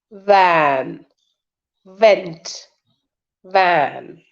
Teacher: F and V sound, as in van, van, vent, van. Okay, there also you have to use lower lip and upper teeth. This is labiodental sound.